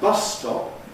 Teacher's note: But in a phrase like bus stop, we get a long s. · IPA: [ˈbʌsstɒp]